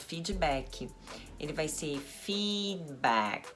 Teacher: o d e o CK não são tão marcados